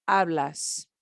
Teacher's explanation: i keep that ah sound because it's an ar verb but i i tag an s on the end